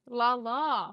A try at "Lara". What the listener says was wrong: No, there's no L. It's Lara.